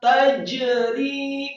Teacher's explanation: Kemudian rohnya yang kasroh 2 harokat dibaca tipis. · jimnya sukun dikolkolahkan atau dipantulkan